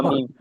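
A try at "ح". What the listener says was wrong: মিম নয়, এটাও হা ছিল, ছোট্ট লেজ মতো, এটাও হা।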